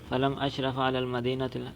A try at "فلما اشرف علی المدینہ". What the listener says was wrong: فلما، لم نہیں،